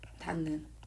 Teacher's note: 비음은 힘이 세요. 앞에 있는 비음 아닌 것을 비음 중에 하나로 바꾼다는 거죠. 그래서 디귿이 니은으로 바뀌었다는 거죠. 그래서 기역 디귿 비읍이 이응 니은 미음으로 바뀐다라는 거예요.